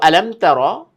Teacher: এই যে মিম সাকিন পরে তা, তার মানে মিম সাকিনের ইজহার, কোনো গুন্নাহ কিন্তু এখানে হবে না।